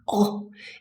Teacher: the tongue pulls very far back oh it's really going to the back of the mouth so round lips and back tongue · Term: British short o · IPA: /ɒ/